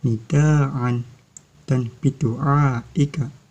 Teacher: Mad wajib mutasil terjadi apabila ada mad tabi'i bertemu dengan hamzah dalam satu kalimat. Cara membacanya yaitu dengan panjang 5 harokat atau 2,5 alif.